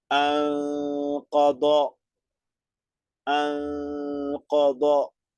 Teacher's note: Siempre dos tiempos de nasalización.